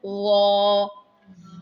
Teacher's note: وا میں بھی ہم نے لپس گول نہیں کرنے، اس کو موٹا کر کے پڑھنا ہے